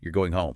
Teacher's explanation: But if I make the pitch rise at the end, you're going home. Ah, it's a question. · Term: intonation